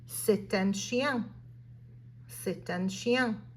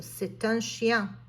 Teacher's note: Now over here, notice that I did the liaison, right? Normally I wouldn't pronounce that final T, but the article starts with a vowel, so I'm going to say that final T.